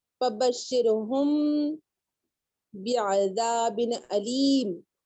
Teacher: اخفاء شفوی میں میم اپنے مخرج سے ضعیف ادا ہوگا، یعنی میم ساکن ادا کرتے وقت ہونٹوں کی خشکی کو نرمی سے بند کیا جائے تاکہ میم ہلکا ہو جائے۔